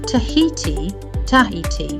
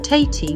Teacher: the aspirated H in the middle of a word will separate vowels in some words like Tahiti and Sahara